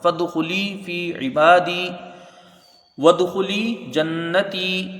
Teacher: واو کو دال سے ملا کے جلدی پڑھا جائے گا، دال میں قلقلہ ہوگا، خا کو جلدی پڑھیں گے، لام یازلی یا مدہ ہے کھینچ کے پڑھی جائے گی۔